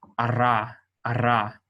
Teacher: a tradition that is used with the resh, is to pronounce it like you would a trilled Spanish R.